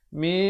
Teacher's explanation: Dibacakan dengan disembunyikan bunyi nun matinya di belakang sin dengan kadar 2 harakat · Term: hukum ikhfa